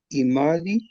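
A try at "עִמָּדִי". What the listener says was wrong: El acento. Imadí.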